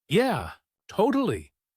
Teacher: if you want to show agreement, you could say, Yeah, totally. with a falling relaxed tone.